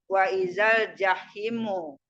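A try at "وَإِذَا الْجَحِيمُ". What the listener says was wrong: Jahimu, hi-nya panjang.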